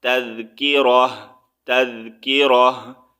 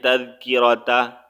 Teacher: اب یہاں پر ہم وقف کریں گے تو تا کا ساؤنڈ جو ہے ہم نے ہمیشہ جو ہے ہا میں چینج کرنا ہے